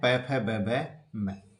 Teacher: ओष्ठ व्यंजन होठों की सहायता से बोले जाने वाले वर्ण है।